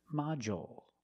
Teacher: we use the dark L because it's after a vowel at the end of the word